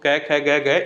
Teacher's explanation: सभी की जो आवाज है वो कंठ से ही आएगी